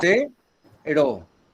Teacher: porque se carga la voz en la penúltima. En la penúltima sílaba. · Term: Llana